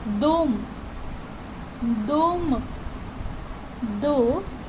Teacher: क्योंकि जो स्ट्रेस है वो पहले वॉवल पे है, यानी कि ओ पे है। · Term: स्ट्रेस वॉवल